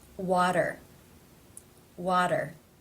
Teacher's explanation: this tea comes between two vowel sounds therefore it is pronounced as the flap tapti or in other words the D sound water water how